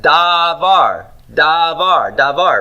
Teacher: So when you learn the word as a vocab item, that dalet has a long A in it.